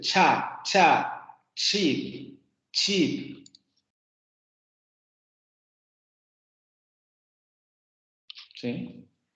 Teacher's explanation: permite la salida del aire y luego va a salir pero no va a salir como una explosión sino que va a salir como una un hilo continuo de aire que va a producir esta turbulencia característica de estos problemas el · cosas vocales no van a librar se produce el momento oclusivo la lengua se sube a la parte de los post alvéolos se cierra la cavidad entonces no permite la salida del aire